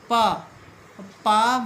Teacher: पा बोलिएगा तो आपके होंठ, दोनों होंठ को छू के वो ध्वनि निकल रही है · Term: स्पर्श वर्ण